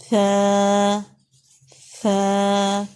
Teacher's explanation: اور ان کا کیا مخرج ہے؟ زبان کا سرا ٹپ آف دا ٹنگ اوپر کے 2 دانتوں کے کناروں سے لگے گا اور ذرا باہر کو نکلے گا